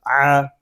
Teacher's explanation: عین حلق کے درمیان والے حصے سے ادا ہوگا ، اس کو او نہیں پڑھیں گے، اس کو باریک پڑھیں